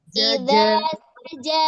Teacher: Pada huruf jim ya, dia merupakan jahar dan syiddah.